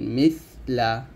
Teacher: জিহ্বাটা উপর দাঁতের আগে লাগিয়ে বাতাস বের করবেন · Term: হামস